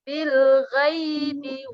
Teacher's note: ada ya sukun sebelumnya huruf berharokat fathah, maka ya-nya dibaca lembut